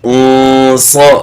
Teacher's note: انص انص انص، صاد کو ساتھ موٹا بھی کرنا ہے